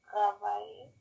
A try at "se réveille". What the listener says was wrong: Remember, there's no A. Se réveille.